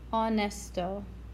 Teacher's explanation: the H is silent. So it really sounds like you're starting on the N, the O.